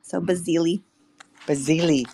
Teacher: Basili, yeah, like basil, the herb, with an extra I on the end. So because it's an Italian last name, the SI phonetically it sounds kind of like a Z